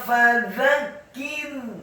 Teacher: Selanjutnya kafnya dibaca tipis dan ditasydidkan kasrah satu harokat, dan ra-nya dibaca sukun tipis. Karena sebelum huruf ra yang sukun adalah huruf kaf yang harokatnya kasrah.